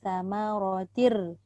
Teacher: Ra tu tebal dan tak panjang.